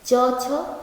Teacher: च बोलोगे तो सटता है ना ऊपर तालु में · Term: तालव्य